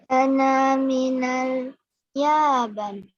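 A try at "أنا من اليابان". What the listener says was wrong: Oh, baknya panjang. Yaban.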